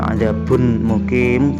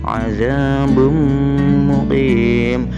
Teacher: Baknya itu berharokat tanwin dhamma, tapi ketika dibaca bukan azabun muqim, bukan, tapi mimnya seolah-olah yang bertasydid. Tanwinnya tidak terbaca karena sudah dimasukkan ke dalam mim. Azabum muqim, berdengung selama dua harokat.